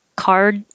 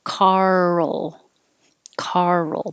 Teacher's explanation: it could sound like the name carl where the tongue does go from r to l position